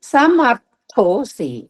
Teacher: ర కింద త మహాప్రాణం ఉంది గట్టిగా పలకాలి